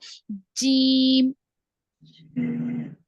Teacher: जुबान का दरमियानी हिस्सा, वसतुल लिसान, मिडिल ऑफ द टंग, ऊपर के तालु को लगने से अदा होता है।